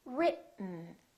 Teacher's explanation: this e kind of disappears it's not pronounced so it's basically the t and the n that are next to each other written keep your tongue up don't release it let the air